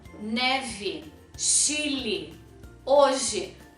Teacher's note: todas essas palavras se escrevem com e mas se pronunciam como I